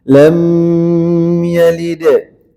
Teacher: lam gak boleh ditahan ya, gak boleh berdengung. Lam yalid.